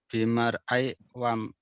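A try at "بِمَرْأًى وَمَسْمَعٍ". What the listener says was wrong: kok bimar ai? bimar an, kan tadi nah bimar'an wa masma'in. Kalau tadi kan mar'an kapa? Karena alif itu nggak bisa dibaca harokatnya, dia isim maksur. Isim maksur kalau dibuang alnya kan jadi patan. Asalnya al-pata, al-mar'a. Alif lamnya dibuang menjadi patan. Begitupun mar'an, bimar'an wa masma'in.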